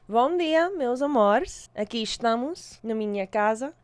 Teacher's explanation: in European Portuguese, we have more of like a sh sound with like S's